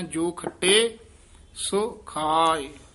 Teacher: ਸੋ ਦੇ ਹੋੜਾ ਵੀ ਹੈ ਔਂਕੜ ਵੀ ਹੈ ਦਰਮਿਆਨਾ ਜਿਹਾ ਉਚਾਰਨ ਕਰਨਾ